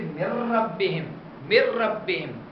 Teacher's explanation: نون کو را سے بدل دیا اور را کو را میں ادغام کر دیا